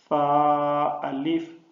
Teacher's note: فا میں سیٹی کی آواز نہیں ہے